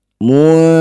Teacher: Kemudian di sini ada nun sukun bertemu dzal, disebut bacaan namanya ikhfa awsatho. Cara bacanya bunyi nun dengungkan 2 harokat. Ketika dengung lisan kita sudah bersiap bunyikan dzal.